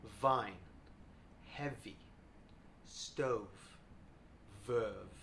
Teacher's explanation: take your top teeth and gently rest them on your bottom lip. Don't bite your lip, just gently rest them here. This is a voiced sound, so you're going to feel the vibration on your neck just here. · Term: V sound